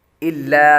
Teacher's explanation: الا کے اندر لام باریک ہے، لفظ اللہ کے لام کے علاوہ باقی تمام لام باریک ہوتے ہیں۔